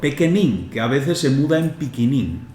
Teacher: la E sin acento, que llamamos E atenuada, tiene un sonido que oscila entre el de la E muda francesa y la I.